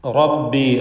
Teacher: റാഇന് പൂർണ്ണമായ തഫ്ഖീം കൊടുക്കണം, തടിപ്പിക്കണം